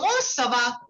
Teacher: so this has to be a little interrogative. Okay, because it's a question.